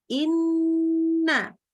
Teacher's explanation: kita bilang lenya tasydid Inna Sebenarnya waktu pas bilangin maksudnya adalah ujung lidah ke langit-langit atasnya kita tekan kuat-kuat tetapi karena Nun itu juga huruf yang keluar dari hidung ya maka suaranya bisa mengalir jadi dia itu secara makrojnya kuat tetapi secara suara dia bisa